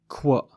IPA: kw